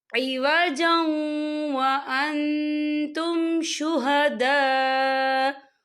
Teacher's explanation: اور یہاں دیکھیں آپ کو چھوٹی سی توئی لکھی نظر آ رہی ہے، تو یہ وقف مطلق کی علامت ہے، تو یہاں پر ٹھہرنا بہتر ہے۔ وقف کی صورت میں حمزہ جو ہے ساکن ہو جائے گا